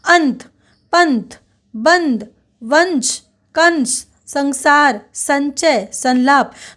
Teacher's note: त थ द ध र ल तालव्य श दंत स और च इनके पहले आने वाले अनुस्वार का न के समान उच्चारण होता है